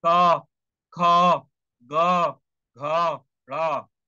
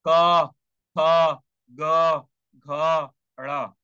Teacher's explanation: सीधी सी बात है, क वर्ण, क वर्ण मतलब क ख ग घ ड़, जो क ख ग में आता है। और जब क ख ग बोलोगे तो आपके कंठ से आवाज आएगा।